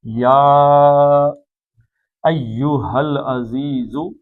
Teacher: یا کو لمبا پڑھنا کیوں؟ چار حرکتیں کھینچنا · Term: یا مد اصلی